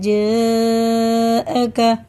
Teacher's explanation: ये बड़ा मद है, इसके बाद अलिफ हमज़ा आ रहा है, तो ये 4 अलिफ के बराबर हम खींच के पढ़ेंगे